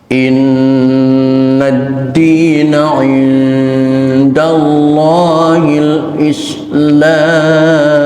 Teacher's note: tasdid yang ada di atas huruf nun berlaku hukum gunnah musyaddadah, tahan selama 1 alif atau 2 harokat